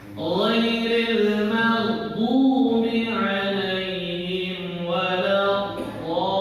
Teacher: Jangan sampai ghairil maghdub itu mantul, masih ada pantulannya. Nah, sedangkan ghair ini bukan termasuk huruf qalqalah, maka dia tidak mantul